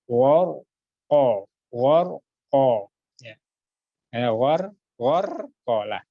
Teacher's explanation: Jadi kalau sebelumnya fathah, ro sukun dibaca takhim, ditebalkan.